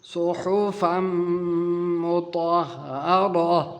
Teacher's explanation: بعد میم آیا ہے، یہاں پر ادغام کا قانون لگے گا، نون ساکن یا تنوین کو مدغم کر کے پڑھیں گے، میم میں داخل کر کے پڑھیں گے